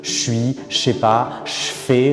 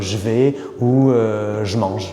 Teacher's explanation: Si après je, il y a une consonne sourde, comme par exemple le S, comme je suis, alors le je va se transformer en che.